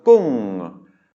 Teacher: it's a mid-class consonant with maito, which means it is automatically a falling tone